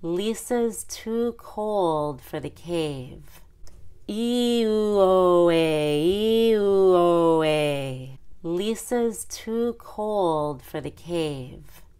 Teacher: cold starts with a long o but the second half goes to the short u in the center of the circle